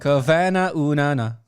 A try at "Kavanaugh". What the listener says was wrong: It's Kavanaugh. Unana. I guess it's because it's I don't know. It's the extra syllables. cram it together.